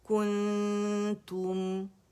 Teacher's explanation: تا جو دمہ ہے اس پہ ہونٹوں کو رول کیا اور میم پہ ان رول کر دیا